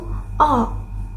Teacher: dibentuk dengan lidah yang berada di posisi tengah dan belakang. serta bibir yang membulat.